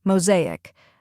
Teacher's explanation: First, we have ma, which rhymes with go and show. Next is zay, which rhymes with day and carries the main stress. Finally, ick, which sounds like ick in tick.